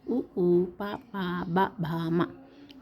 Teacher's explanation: పెదవి సహాయంతో పలికే అక్షరాలు ఉ, ఊ, ప, ప, బ, భ, మ ఓష్ట్యాలు.